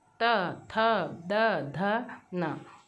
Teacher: तो हम इनको बोल के देखेंगे तो देखेंगे कि हमारी जीवा दांतों को स्पर्श कर रही है। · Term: दंत्य ध्वनियाँ